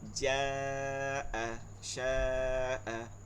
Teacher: গোল হামজা থাকলে 4 আলিফ টেনে পড়তে হয়, ইয়াকে মাদ্দে মুত্তাসিল বলে